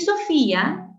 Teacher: tienes secuencia de cerrada I más una abierta A con acento en la cerrada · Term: hiato acentual